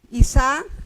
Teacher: el acento prosódico va a ir en la segunda sílaba